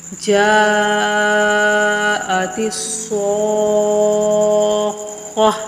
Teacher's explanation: یہ دونوں پر حروف ہیں، صاد بھی اور خا بھی، ان کو پر کر کے پڑھنے ہیں، موٹا کر کے